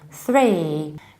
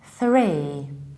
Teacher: Don't make your vocal fold vibrate, just simply push it a little bit and say three. You push it forward and exactly this way you start to say three, not tree, where our tongue is behind our teeth.